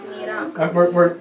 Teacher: In the Hebrew, you don't have a K in the Nira. It's not Nikra, it's Nira.